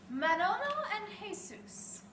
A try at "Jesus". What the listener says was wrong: You don't pronounce the J.